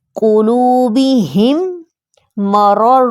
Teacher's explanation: ادغام شفوی کا قاعدہ یہ ہے کہ اگر میم ساکن کے بعد میم آ جائے تو وہاں پر ادغام ہوگا، یعنی میم ساکن کو نیکسٹ میم کے ساتھ شد کے ذریعے ہم جوائن کر دیں گے۔